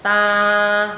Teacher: Ta là không lên giọng cũng không xuống thấp, đọc ngang ngang bằng bằng